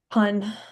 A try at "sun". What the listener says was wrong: I heard you say pun this time.